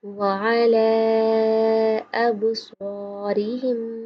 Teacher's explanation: سواد موٹا پڑھیں گے منہ گول کر کے۔